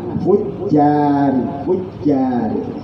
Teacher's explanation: hati-hati kalau membaca jim adalah makhrajnya tengah lidah, jangan sampai ana hamse, nek dipucuk mesti ana hamse, coba dipucukkan lidah hujjari kan ada hamse, tapi kalau di tengah hujjari, hujjari.